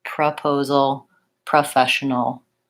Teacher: It can either say pro or pra. And when it's not stressed, it's going to say pra